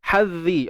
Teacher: Zal ni kita tahu dah. Kena keluar hujung lidah kan.